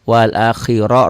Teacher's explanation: wal akhira ro-nya dibaca tebal tafkhim